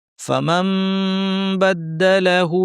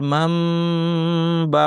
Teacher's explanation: নুন সাকিন বা আসছে, নুনকে পরিবর্তন করে মিম বানিয়ে পড়তে হবে। মান বাকে আমাদের মাম বা পড়তে হবে। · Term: ইকলাব